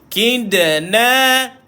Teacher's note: Kidna ada qalqalah pada dal. Tuan-tuan, qalqalah kecil. Duduk di tengah-tengah kalimah. Duduk di tengah ayat.